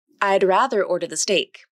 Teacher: the tongue tip comes up quickly to the alveolar ridge, then it comes down quickly. Then the tongue moves back for the R consonant. · think of this D consonant as almost like a flap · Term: mini-released D consonant